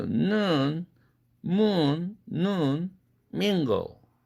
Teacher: 앞뒤에 다 비음이 있죠. 그러니까 가운데에 끼어 있는 모음은 당연히 코로 새 나간다. 비음화된다. 그래서 모음이 동화된다.